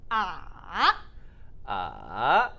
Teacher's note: Third tone, we call it a lower and then rising tone.